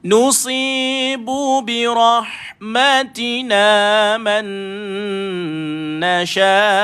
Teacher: T itu mesti huruf ta memang kena keluar angin. Dia huruf hamas. Jadi birahmatina mesti ada keluar angin, tapi jangan berlebihan sangat.